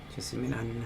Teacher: So the stress here is going to be on the me